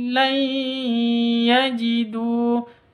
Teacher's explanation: nun mati bertemu dengan Ya cara bacanya masuk ke ya